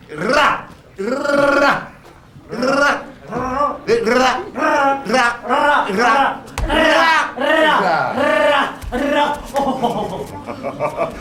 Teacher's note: Oh, que l'ai-je étudié plutôt pour avoir appris tout cela? L'air, en portant le bout de la langue jusqu'en haut du palais, de sorte qu'étant ainsi frôlée par l'air qui sort avec force, elle lui cède et revient toujours au même endroit, faisant comme une sorte de petit tremblement. Ra, ra, ra, ra, ra, ra, ra, ra.